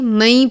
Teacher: تو ہم اس کو من نہیں پڑھیں گے بلکہ مئی پڑھیں گے، وہ بھی غنے کے ساتھ